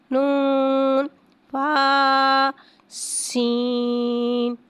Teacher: فا کو ایک الف یعنی 2 حرکات کے برابر کھینچ کے پڑھیں گے۔ سین کو ایک الف یعنی 3 حرکات کے برابر کھینچ کے پڑھیں گے۔ یہاں پہ سیٹی کو ظاہر کر کے پڑھیں گے۔